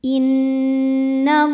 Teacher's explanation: Lam pada lafaz Allah dibunyikan secara tafkhim sebab huruf sebelumnya berbaris fathah, maka dibacanya tebal, pangkal lidah diangkat.